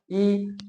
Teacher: ठीक, जैसे ई बोलते हैं तो ई बोलेंगे तो आपका जीभ का सामने वाला भाग क्या करता है? थोड़ा आगे आता है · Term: अग्र स्वर